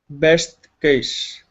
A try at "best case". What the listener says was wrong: Okay, point the tongue down. You're saying case. Your tongue is pointing upwards. You're saying case. Instead of case, it's case.